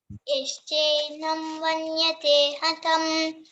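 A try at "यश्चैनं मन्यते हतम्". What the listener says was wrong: వన్యతే కాదమ్మి మన్యతే హతం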